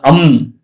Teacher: ಗಂಟಲು ಮತ್ತು ಮೂಗಿನ ಸಹಾಯದಿಂದ ಹುಟ್ಟುವ ವರ್ಣ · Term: ಕಂಠನಾಸಿಕ